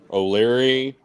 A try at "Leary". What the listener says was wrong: His name is not O'Leary, It's Leary.